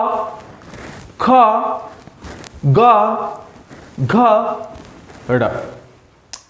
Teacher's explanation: जब आप इसका उच्चारण कर रही हो तो आप का उच्चारण कंठ से निकल रहा है